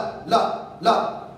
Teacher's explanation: जब ला बोल रहे हो ना दोस्तों, ला, तो आप देखिए दंत पर जीभ टकरा रही है, लेकिन पूरी देखिए दंत पर नहीं टकरा रही है, दंत और मसूड़े के बीचों बीच में टकरा रही है। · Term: दंत मूल या वत्सर